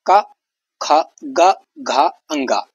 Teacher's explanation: तो इसमें देखिए कंठ से आवाज निकलती है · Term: कंठ वर्ण